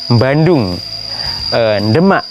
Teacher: Misalnya tadi saya contohkan ketika orang Jawa mengucapkan kota yang diawali dengan bunyi D atau B, biasanya diawali dengan huruf sengau. Bandung, Demak misalnya.